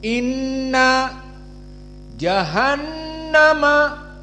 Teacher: Ahkam Nun musyaddadah maka dia ghunah dalam berbagai qiraat sepakat maka Inna ghunah makhrajnya dari hidung kisum dan dua harakat Inna jahannama sama jahannama nunnya musyaddadah berarti makhrajnya dari kisum kemudian · jahannama nunnya musyaddadah, berarti makhrajnya dari khaysum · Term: gunnah